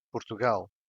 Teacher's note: the stressed syllable is in gal